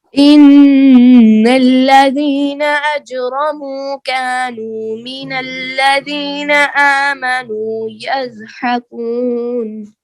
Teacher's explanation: جتنا کا کو لمبا کرنا ہے اتنا ہی نو کو لمبا کرنا ہے